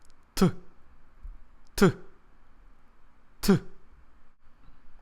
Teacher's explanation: The Russian T sounds harder and harsher because the tongue is closer to the teeth. When I say T in Russian, my tongue touches the front teeth like this.